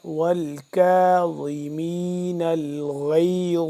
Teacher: باریک کر کے پڑھیں گے کاف کو لیکن تھوڑا سا لمبا کریں گے ایک الف کے برابر